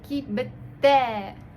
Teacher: Кибете. Т мы слышим, как бы она такой глухой, и не мягко будет, а как бы немного тверже.